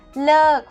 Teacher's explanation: falling tone to quit or to stop